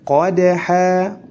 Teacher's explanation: dalnya harus dipantulkan karena memiliki sifat qalqalah